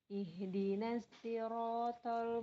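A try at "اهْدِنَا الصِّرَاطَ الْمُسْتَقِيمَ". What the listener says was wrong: Ihdinas. shod ya, bukan huruf sin. Huruf shod ihdinas. Ada sofir namanya sifatul hurufnya tuh. Ihdinas sirotol. To-nya lebih tebal daripada huruf ta. Ihdinas. Lebih tebal daripada sin. Si. Ihdinas si. Bukan ihdinas si.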